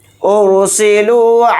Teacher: اس مد کو ہم 3 الف کی مقدار کھینچ کر پڑھیں گے اور یہاں پر را ساکن کو موٹا یعنی پر پڑھیں گے